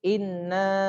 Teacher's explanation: Jadi ketika membaca gunna ini dia harus ditekan atau ditahan 2 harokat.